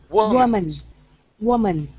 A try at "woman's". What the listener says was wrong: Okay, now give me an S at the end. Woman's.